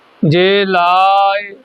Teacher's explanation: ਹੈ ੲੀ ਨੂੰ ਸਿਹਾਰੀ ਲੱਗੀ ਹੋਈ ਹੈ ਇਹਨੂੰ ਬੋਲਣਾ ਲਾਇ >> ਲਾ ਲੰਮਾ ਲਜਾਣਾ ੲੀ ਨੂੰ ਜਾ ਕੇ ਆਵਾਜ ਛੱਡ ਦੇਣੀ ਹੈ